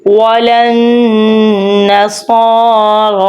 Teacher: وجہ سے اٹیچ ہو رہا ہے کہ اس لیے ادھر نون گننا بھی ہوگا، ناک میں سے آواز نکالیں گے